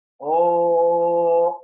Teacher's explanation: we will add half a second to the pranava syllable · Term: Sardha Plutam